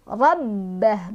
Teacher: Ro-nya di sini punya dibaca secara tafkhim atau tebal karena ro-nya berbaris fathah. Rabbah, ba-nya ditekan ada tasydid. Rabbah, bah-nya lepasin, nggak ada pemanjangnya ya.